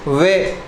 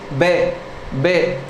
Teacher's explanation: अर्थात जब इसका उच्चारण करते हैं तो दोस्तों हमारे जो ऊपर के दांत हैं वो हमारे नीचे के होंठ से लगते हैं। जब इस वे का उच्चारण करते हैं तो हमारे ऊपर के दांत नीचे के होंठ से स्पर्श करते हैं